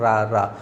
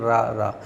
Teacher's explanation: जीभ की नोक से शीघ्र ही बंद हो जाता है जैसे हम लोग इसका उच्चारण करते हैं जैसे रा बोलते हैं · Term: लुंठित